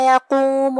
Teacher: قاف کو ہم زبان کے جڑ اور تالو کے نرم حصے سے ادا کریں گے. آخر میں میم پہ پیش ہے تو اس کا دھیان رہے. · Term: حرف القاف